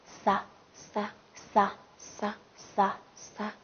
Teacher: 发音方法是也是轻擦音